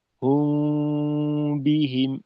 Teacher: আচ্ছা রব্বাহু এখানে জি হলো আমরা ঠোঁটটাকে উপরের ঠোঁটকে নিচের ঠোঁটের সঙ্গে শক্তভাবে চাপ দিয়ে না মিলিয়ে আলতোভাবে স্পর্শ করা যাতে করে মুখের থেকেও আওয়াজের কিছুটা অংশ বের হতে পারে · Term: গুন্নাটা